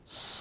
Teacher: इसके उच्चारण में जीवा दांतों को छुए गी जब जीवा दांतों को छुए गी तो वहां से सीटी निकलती है स कैसे बोलेंगे इसको स क्योंकि जीवा दांतों को छुए गी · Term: तीसरा स